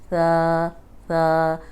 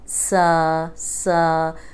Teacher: اوپر سامنے کے جو دو دانت ہیں ان کے اندرونی کنارے پہ زبان رکھیں اور بول دیں ثا ثا، زیادہ بنانے کی ضرورت نہیں ہے، اب آرام سے زبان رکھیں اور بولیں ثا ثا۔